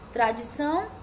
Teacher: a sílaba tônica da palavra tradição é o tão que é a última sílaba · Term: oxítona